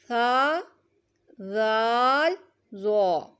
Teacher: ذو کو نرمی کے ساتھ ہم نے ادا کرنا ہے۔ زبان کا سرہ اور اوپر کے دانتوں کے اندرونی کنارے سے ادا ہوتے ہیں۔ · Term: حروف لثویہ